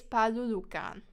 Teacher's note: So here the we is behind the tsamsiu, but the palulukan doesn't change. So it doesn't become falulukan, it stays palulukan. The p doesn't change, even though there is a we in front. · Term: lenition